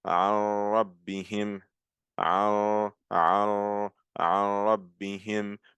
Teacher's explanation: I'm mixing the noon with the ra, but you're not hearing any nasal sound. You're not hearing meow, meow. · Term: without ghunna